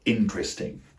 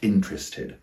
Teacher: Notice that the primary stress is on the first syllable again. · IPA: /'ɪntristɪŋ/